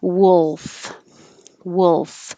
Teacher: have to be the clear perfect l up in the front my tongue tip can be down and the middle of the tongue comes up to touch the top of the mouth and that's a dark l · it has the vowel uh like took and good so your tongue's not too high